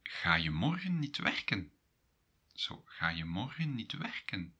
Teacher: Go a little bit up at the end of the sentence.